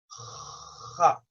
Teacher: The letter ha is between your tonsils, between the back of your tongue and the tonsils, ha. It makes that vibrating sound.